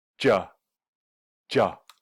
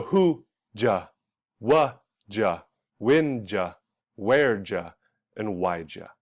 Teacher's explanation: did you comes together and sounds like ja, right? Ja, ja.